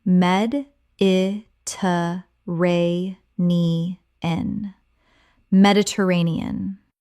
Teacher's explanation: Mediterranean Common mispronunciation: Med-it-er-a-ne-an Correct pronunciation: Med-i-ter-ra-ne-an Six syllables with the stress on the fourth.